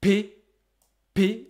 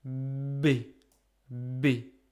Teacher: p is very tense B is very relaxed · you can consider that p a b are just the tense version and the relaxed version of the same sound p p is very tense you can feel your whole body